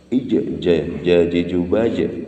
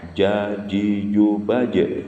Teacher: Melafadzkan huruf jim niku tidak boleh keluar angin